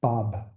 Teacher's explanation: And um it's quite fascinating you know when you do bob it's a bilabial closure the lips have to close